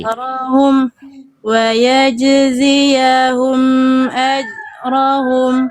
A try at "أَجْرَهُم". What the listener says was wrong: Itu mah gak ada pantulannya. Ajrahum.